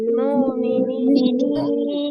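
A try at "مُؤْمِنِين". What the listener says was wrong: আপু, মু এরকম হবে না, মানে ওয়াওতে টান হবে না, হ্যাঁ।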